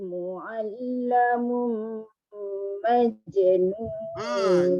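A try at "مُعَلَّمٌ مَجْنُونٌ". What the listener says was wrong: Jimnya berat. Mu'allamun majnun. Jim. Seolah-olah macam terberhenti suara. Majnun. Dia bila qalqalah dalam pertengahan bacaan ataupun tengahan kalimah berada di sebutan dia terus je.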